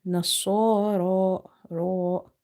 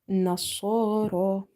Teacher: Ra is heavy because of having vertical fatha on top of it. It's not from the musta'aliya letters because it's situation sensitive.